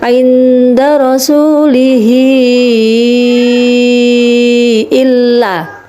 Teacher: Karena ada hahihu yang dibaca panjang bertemu dengan huruf hamzah berbentuk alif. Nah, ini panjangnya adalah 2,5 alif atau 5 harokat. Jadi harus bacanya panjang.